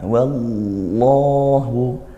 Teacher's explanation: ditebalkan huruf lamnya wallahu yang aslinya la jadi l tetap bunyi lam namun ditebalkan.